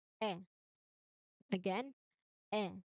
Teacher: So mouth is medium wide, open. Lips here are totally relaxed. It is not spread. It is not round. Just relaxed. And then when it comes to your tongue, it is flat.